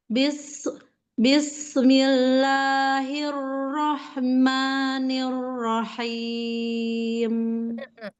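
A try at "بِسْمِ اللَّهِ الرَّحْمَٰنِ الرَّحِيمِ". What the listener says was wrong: Sudah baik ya, hanya tadi, pada saat nah ada rohama, ada terseret tawalud di situ hati-hati.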